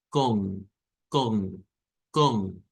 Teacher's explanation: Eso nos indica que vamos a hacer una O nasal, es decir, una O nasalizada. Con, con, con sería el sonido que debemos de hacer.